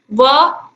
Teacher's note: व इसका उच्चारण होता है दंतोष्ठ से, दांतों से और ओंठों से। तो ऑप्शन आ जो है ये बिल्कुल सही होगा, वकार से दंतोष्ठ, यही बोला जाता है संस्कृत में, यानी कि वा का उच्चारण स्थान दंत और ओष्ठ है।